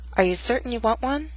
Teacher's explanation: this statement has two glottal stops certain and want one the final T is followed by a